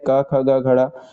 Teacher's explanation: जितने भी क वर्ग है क, ख, ग, घण। ये इनको जो है कंठ से बोला जाता है। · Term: कंठ व्यंजन